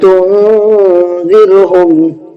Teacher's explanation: یہ نون ساکن ہے اور اس کے بعد میں حروف اخفا کے 15 حروف میں سے زال آیا، جس کی وجہ سے ہم نے نون ساکن کی آواز کو ناک میں چھپا کر کے پڑھا ہے، غنہ کر کے پڑھا ہے